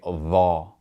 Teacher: And because the letter ball is heavy, we're going to use a capital D and a capital H for its transliteration. And when it has a fatha, we're going to pronounce that A sound like aw. So we would say aw ball rather than tha.